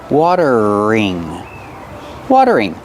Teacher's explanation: The T is a fast D. Water. Then use the voiced R.